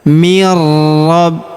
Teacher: huruf bi juga kita tahan dan tekan karena terdapat tanda tasdid